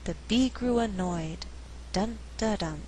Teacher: In this sentence, we have three content words: bee, grew, annoyed. But I choose not to stress grew so that I have alternating stress. The resulting rhythm is the bee grew annoyed, dun da dun, 1 and 2.